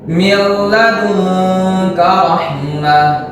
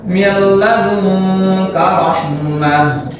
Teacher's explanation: ingat dibaca tanpa gunnah. Dia hanya dimasukkan ke huruf idgham bila gunnahnya.